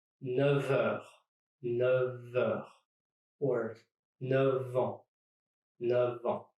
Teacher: And F turns into a V.